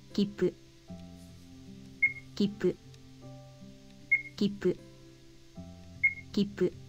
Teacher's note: For now, just remember that when you see a small ts, you pause ever so slightly before pronunciating the next consonant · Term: double consonants